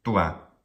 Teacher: The first syllable does not contain a long vowel, and the first syllable does not end with a consonant, so it is short in duration. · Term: dibrac